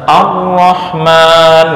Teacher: menempel dengan kuat pada langit-langit mulut membuat tasdid pada huruf ro menjadi lebih kuat dibandingkan dengan huruf-huruf lainnya